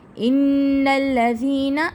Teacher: نون تشدید غنہ، ذی کو کھینچیں گے یا مدہ